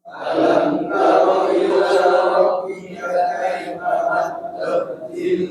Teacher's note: untuk mensempurnakan bacaan lam yang bertasydid dan diwaqaf, suaranya diakhiri dengan suara nada tinggi atau disebut naber, ditinggiin.